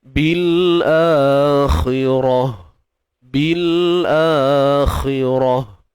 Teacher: Mad badal, hamzah di awal kalimah. Kha baris bawah, khi tebal. Ra baris atas, ra tebal.